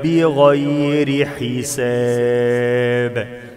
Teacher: لما نقف على الباء يبقى فيها قلقلة